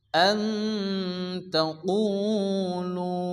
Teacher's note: দুটি ওয়ামাদ্দা এক আলিফ করে টেনে পড়তে হবে